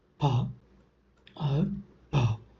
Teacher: But when you are producing the sounds such as pa or pa, the organs, the articulator, the speech organs involved are the lips, called as labials, in the production of p, and the both the lips are involved in the production, and it is called as bilabial sound